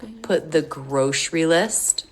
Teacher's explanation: We have a stop T here because the next word begins with a consonant.